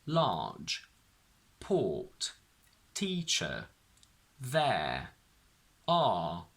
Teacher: So I don't pronounce the sound R in these words.